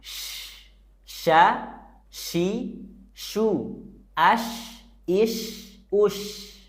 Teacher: saat nyebut huruf syin dekatkan Tengah lidah kita ke langit-langit tengah